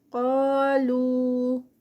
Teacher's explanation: قا پہ 2 کاؤنٹس، لو جو ہے یہ مد منفصل 4 کاؤنٹس کا اسٹریچ